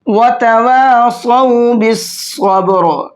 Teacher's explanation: بالصبر کے اندر یہاں بھی ہم نے الف لام نہیں پڑھا ہے، قاعدہ وہی ہے جو یہاں پر بتایا تھا، صاد حروف شمسی میں سے ہیں، اس سے پہلے الف اور لام آ رہے ہیں تو الف لام کو چھوڑ دیں گے، اور صاد کو موٹا کر کے پڑھیں گے